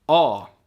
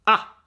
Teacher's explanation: this is the long sound, which is called the dark A. A. But we also have the short A, which is A. And as you can hear, those aren't completely the same sound, extended or shortened, right?